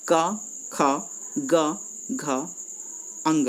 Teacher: कंठ से यानी गले से बोलते हैं